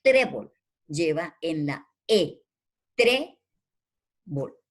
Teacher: llevan el acento en la penúltima sílaba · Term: palabras graves